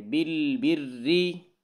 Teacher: را کے نیچے زیر ہے تو را کو باریک پڑھیں گے